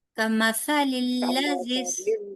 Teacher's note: कमासा को, सा को लंबा नहीं करना